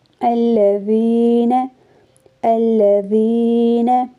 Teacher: الذین، الذین، یہاں پہ ذال کے بعد یا ہے اور یا کے اوپر جزم ہے اور یا سے پہلے زیر آ رہی ہے، اس لیے یہاں پہ یا مدہ کی ادائیگی ہوگی، یعنی 1 الف کی مقدار الفاظ کو کھینچے پڑھیں گے۔ الذین، یہاں پہ یا مدہ کی ادائیگی ہو رہی ہے اور نون کو جلدی سے پڑھیں گے۔